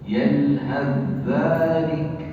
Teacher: Tulisannya ada ta-nya kan? Tapi dibaca tanpa ta ya, karena telah diidghamkan.